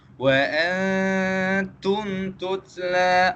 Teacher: Yang pertama, kita kena baca mim mati tersebut dengan jelas. Dan yang kedua, kita tak boleh dengungkan dia. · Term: izhar syafawi